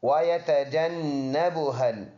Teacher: واو دونوں ہونٹوں کے گول ہونے سے ادا ہوتا ہے، یہ اس کا مخرج دونوں ہونٹوں کے گول ہونا ہے۔ · ناک میں آواز لے کے جائیں گے 1 سیکنڈ کے لیے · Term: غنہ